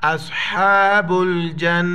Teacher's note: اولئک اصحاب الجنہ، نون پر جو ہے نا شد ہے، غنہ کریں گے، با کو لام کے ساتھ ملائیں گے، جیم کو نون کے ساتھ